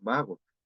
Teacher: solo existe variante fricativa en caso de español